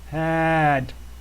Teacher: the tongue hits the top of the mouth, you just cut off that vowel sound. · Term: D sound